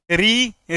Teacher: ऋ ऋ में ओठ गोल नहीं हुए है ना